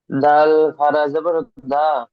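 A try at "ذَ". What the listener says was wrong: দাল নয় জাল জাল জাল খাড়া জবর জা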